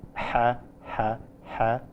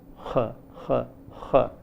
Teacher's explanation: a sound is produced on the pharyngeal wall by the root of the tongue · We listen to 2 sounds which are pharyngeal sounds in two languages, Arabic and Assamese in India. Whereas in Arabic, the pharyngeal sound is pretty low, like ha, ha, ha. In Assamese, the pharyngeal sound is heard to be a little high, such as h, h, h, so that they appear to be almost two different types of sounds, but actually both of them are pharyngeal sounds.